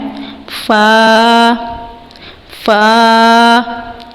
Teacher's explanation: یہ حرف آپ نے اوپر والے دانتوں کو نیچے والے ہونٹ کے تر حصے سے لگا کر ادا کرنا ہے